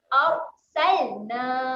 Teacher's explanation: Jangan bunyi lantun dekat huruf lam.